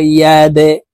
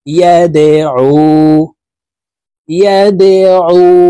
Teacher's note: ধাক্কা দিয়ে উচ্চারণ করতে হবে, কারণ দাল কলকলার হরফ